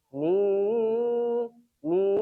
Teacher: ma khalaq maq syarri syarri rinnya syarri ada tasdidnya syarri alhamdulillah ma khalaq minar ma khalaq untuk ikhfanya dari nim jadi nunnya disamarkan disertai dengung dan posisi lisan kita sudah persiapan di huruf selanjutnya · karena ini ikhfa yang artinya samar, maka bunyi nunnya dibuat samar.